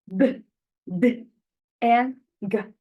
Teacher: the airflow is completely blocking the mouth for a moment before being released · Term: Stops